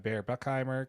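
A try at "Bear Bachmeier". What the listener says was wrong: Did you just say Bear Buckheimer? It sounded like Buckheimer. It's Buckmeyer. It sounded like Buckheimer.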